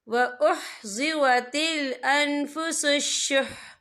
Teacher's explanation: وقف کی صورت میں ح جو ہے ساکن ہو جائے گا